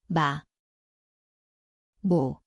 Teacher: It sounds like M. The place is the both lips nasal.